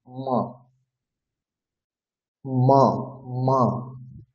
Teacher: তো সেটার উচ্চারণ বোঝানোর জন্য আপনাকে নাকে থেকে উচ্চারণ করতে হবে, ম ম ম। দুটি ঠোঁট স্পর্শ করবে এবং উচ্চারণ হবে নাক থেকে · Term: নাসিকা